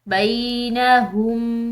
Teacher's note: با کے بعد یا ساکن ہے تو ایک الف کی مقدار لمبا پڑھیں گے. بینہم فلا، لام کے اوپر یہاں یہ جو حمزہ آ رہی ہے اس میں یہاں پر جو ہے اس کے اوپر چھوٹی مد ہے جس کی وجہ سے ہم نے اس کو پڑھنا ہے ایک الف کی مقدار لمبا.